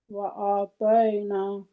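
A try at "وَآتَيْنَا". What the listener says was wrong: तय कैसे है, तय कैसे है? आगे या तो नहीं है, आइन है। नहीं, मैं तय तो ता होगा, इस वजह से तई होगा जब ता के आगे जज्म वाली या होगी। तो क्या जज्म वाली या है कि आइन है? आइन है, आइन पढ़ना है, ठीक है? झटका भी नहीं देना क्योंकि वो हमजा हो जाएगा। यूं ही झटका आ गया, वो हमजा बन गया।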